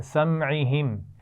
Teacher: سمعہم میں دونوں میم ساکن ہیں اور دونوں پر غنہ نہیں ہوگا، کیونکہ ہم نے پڑھا ہے میم ساکن کے بعد میم آ جائے یا با آ جائے تب غنہ کرتے ہیں.